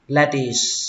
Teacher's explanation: các bạn lên dòng âm đầu tiên và xuống dòng âm thứ hai lettuce, kết thúc bằng âm s.